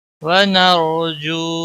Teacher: را ساکن سے پہلے زبر ہے اس لیے را کو موٹا پڑھیں گے